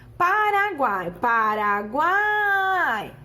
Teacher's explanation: semivogal + vogal + semivogal o que que eu tenho um tritongo